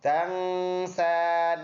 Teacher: سین پر کڑی زبر ہے، ایک الف کے اندازے سے لمبا کریں گے، اور یا پھر سائلنٹ ہے.